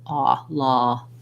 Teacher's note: It's a rounded vowel. It's not an O sound or an ah sound, kind of ah, law, just like in the word law.